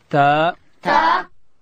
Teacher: تا ادا کیږي چې کله د لوړې زامې د مخ دو غاښو بیخو ته د ژبې سر وروړو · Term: حرف تا